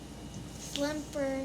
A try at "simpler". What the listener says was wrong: No, there's no L. Simpler. Simpler.